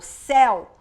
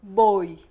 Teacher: Quando eu falo céu, a minha boca abre mais do que quando eu falo boi, fechadinho. Então, por isso que a gente chama de ditongo aberto.